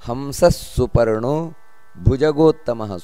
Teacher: ಸುಪರ್ಣೋ ದೀರ್ಘ ಇದೆ ಭುಜಗೋತ್ತಮಃ ಭೂಮಹಾಪ್ರಾಣ ಇದೆ · ಹಂಸಹ ಅಂತ ಇದೆ ಅದು ಅರ್ಧ ವಿಸರ್ಗ ಬರುತ್ತದೆ